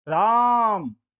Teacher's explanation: इसमें रा को 3 मात्रा तक कहा गया है, तो इसके आगे इस प्रकार का एक चिन्ह आप देखेंगे तो इसे हम प्लुत स्वर कहेंगे।